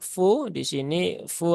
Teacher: ada waw sukun setelah dhammah. Ini fu-nya dibaca panjang ya, dua harokat ya.